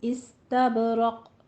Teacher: اس میں سین میں سیٹی کی آواز آنی چاہیے، تب میں با کے اوپر قلقلہ کرنا ہے، اور رق میں بھی را کو پور پڑھنا ہے، آگے قوف کے اوپر قلقلہ کرنا ہے۔